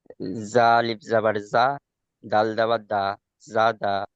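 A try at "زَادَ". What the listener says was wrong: হলো না, টান হয়নি, আলিফ মাদ্দার টানটা ছেড়ে গিয়েছে। তাহলে এটা আছে জা, জা আলিফ জাবার জা, দাল জাবার দা, জা দা।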